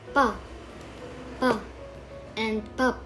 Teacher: It has the same pronunciation whether it was the first consonant in the syllable or the second one. Biyup, pronounced as b, or actually in a degree between p and b at the beginning of a word, and as p at the end. For example, pa, and pap.